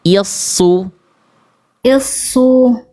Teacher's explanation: I-nya tipis dulu jangan pakai pangkal lidah. Pangkal lidahnya naik ketika shad. I baru es I.